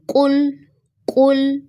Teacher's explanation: پہلے لفظ میں قاف موٹا ہے، اس کو موٹا ہی پڑھنا ہے۔ اگر آپ اس کو باریک قاف کے ساتھ ریپلیس کرتے ہیں تو اس کا مطلب ہوگا کھا لو، جبکہ اس کا اصل میننگ ہے کہو، کہہ دو۔